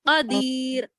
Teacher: कदीर में या साकिन से पहले जेर है, तो खींच कर पढ़ेंगे